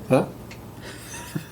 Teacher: So there's a tiny bit of labial dental closure there